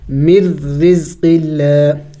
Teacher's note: تو یہاں پہ ادغام ہو چکا ہے تو نون ساکن کو نہیں پڑھیں گے بلکہ میم کو ہم نے اس را کے ساتھ ملانا ہوگا. من رزق اللہ، اور ہم نے بھی اوپر پڑھ لیا کہ را کے نیچے جب زیر را کے نیچے جب زیر ہو تو را کو باریک کر کے پڑھی جائے گی، یعنی اس کو موٹی نہیں پڑھیں گے.